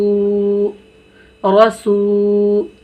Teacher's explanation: रा मोटा पढ़ेंगे, रा यानी मुंह भर के पढ़ेंगे